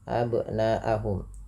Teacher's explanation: panjangkan bunyi suara na, yang dimana di sini na-nya dipanjangkan 4 atau 5 harakat yang kita hukumi dengan bacaan mad wajib muttasil.